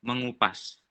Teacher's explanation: Jika men bertemu S, maka diluluhkan menjadi NY. Jika bertemu K, maka diluluhkan menjadi eng, NG. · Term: peluluhan fonem N